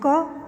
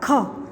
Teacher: इसका विकास देखो, क बोलो और ख बोले, क ख, ख में हवा या वायु ज़्यादा निकली।